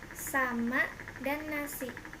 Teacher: bunyi lamina palatal geseran tak bersuara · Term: Konsonan S